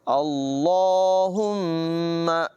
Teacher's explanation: میم مشدد میں غنہ کریں گے